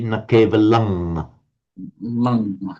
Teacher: In Pali. The Anuswara is often pronounced as a ng sound.